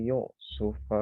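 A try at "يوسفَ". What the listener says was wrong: Yusufa. Itu dibacanya bukan yuk sufa ya, ala yusufa.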